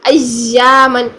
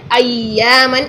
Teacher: تشدید ادا کرنے کے لیے بھی آپ نے مخرج وہی رکھنا ہے، وسط اللسان اوپر تالو کی طرف کریں، لیکن آپ نے اس کو بالکل چپکانا نہیں ہے تشدید کے لیے، وہاں پر آپ نرمی سے اس کو ادا کرنا ہے۔